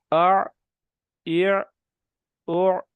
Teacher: آ رک جائے، آواز آئین پہ جا کے رک جائے، سٹاپ لگ جائے. آ اع او.